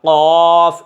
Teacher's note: یہ قاف قلقلے کے ساتھ حلق سے نکلے گا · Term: بڑا قاف